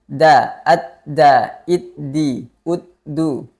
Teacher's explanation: Dal itu ujung lidah menyentuh pangkal gigi seri atas da da sifat huruf Dal yang pertama adalah jahar atau tidak mengalirnya nafas